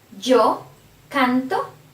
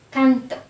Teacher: the stress is before the ending, before the O